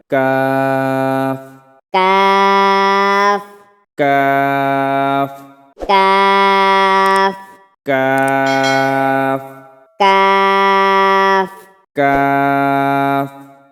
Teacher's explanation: তারপরে আসি ৫ নম্বর মাখরাজ, জিহ্বার গোড়া থেকে একটু আগে বাড়িয়া তার বরাবর উপরে তালুর সঙ্গে লাগাইয়া মধ্যখান পেঁচানো কাফ। অর্থাৎ জিহ্বার গোড়া থেকে একটু আগে বাড়িয়া তার বরাবর উপরের যে তালু আছে তালুর সাথে লাগাইয়া কাফ উচ্চারণ করিতে হয়।